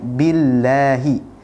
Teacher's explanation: lamnya dibaca tipis karena lam tersebut adalah lafdzul jalalah atau lafaz Allah yang sebelumnya berharakat kasrah billahi. Jadi disempurnakan tipisnya billahi minasyaitoni.